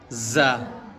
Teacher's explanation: زا جو ہے اس میں تھوڑا زلزلہ سا ہوگا اور بھن بھناٹ کی سی آواز ہوگی